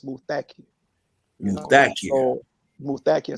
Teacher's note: the accent is on the second syllable